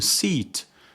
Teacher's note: the front of the tongue is raised to a high position